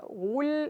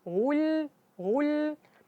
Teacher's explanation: Di lam itu jangan dimoncongkan lagi karena dia udah harakat sukun. Jadi kita baca wul, jadi terasa bahwa lamnya lebih tipis. Wul, wul. Sedangkan kalau ketika kita baca lam, mulutnya masih dimoncongin, suaranya beda.